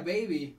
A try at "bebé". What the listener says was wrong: Baby, baby. No. Bueno, eso es baby en inglés, pero bebé. Bebé.